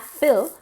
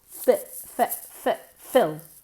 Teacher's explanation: bajamos la mandíbula, es casi una I mezclada con una E